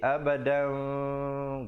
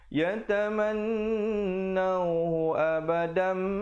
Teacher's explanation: Bibir tu sekadar bersentuhan saja. Jangan pula kita dengungkan macam dengung wajibul gunnah di situ. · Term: iqlab